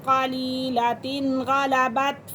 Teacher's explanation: یہاں پہ غنہ نہیں کریں گے کیونکہ تنوین کے فوراً بعد حروف حلقی کے اندر سے غین آ رہا ہے تو یہاں پہ اظہار حلقی ہوگا۔